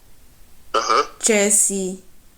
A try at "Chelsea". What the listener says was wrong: Non, là, c'est pas bon. Il y a un coup de glotte. Donc, je veux que tu articules. Chelsea. Ce n'est pas Chelsea. Tu dis Chelsea. Et non, il n'y a pas de coup de glotte. Il faut faire le Chelsea.